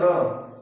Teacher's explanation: अगला हमारा लुंठित र, जिसमें जीव वर्ष की ओर जाती है। जीव जैसे आप इसे बोलेंगे र, तो जीव हमारी किसकी ओर जाएगी, वर्ष की ओर जाएगी।